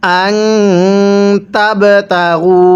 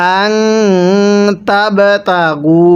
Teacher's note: নুন সাকিনের পরে তা থাকলে নুনটা গুনাহ করে পড়তে হবে।